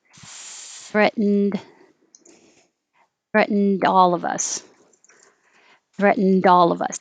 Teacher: Now you'll hear it connect to the A, threatened all.